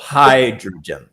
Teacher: the emphasis is on the first syllable. Hydrogen. >> Hydrogen.